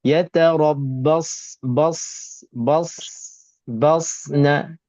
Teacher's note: Sad ini tak ada tergerak bibir mulut pun boleh kita tebalkan dan kita boleh bezakan dengan huruf sin.